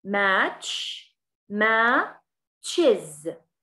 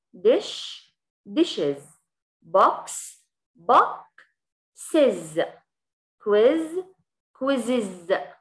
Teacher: الإشارة المائلة هاي دائماً أي رموز بتكون موجودة داخل السلاشز الخطين المائلات هي أصوات، فإحنا رح نكتبها بهاي الطريقة اللي هي إز، فالصوت بيطلع معانا إز، فإحنا بنضيف إي إس وبنلفظها إز